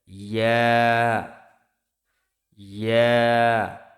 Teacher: জিহ্বার মধ্যখান তার বরাবর উপরের তালুর সঙ্গে লাগিয়ে উচ্চারিত হয় ইয়া।